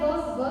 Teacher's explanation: तो नाम से समझ में आ रहा है व ठीक है दांत जो है आपके होट में आके लगेगा